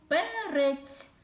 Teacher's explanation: р твердий приголосний перець звук е голосний і останній звук перець звук ць М'який приголосний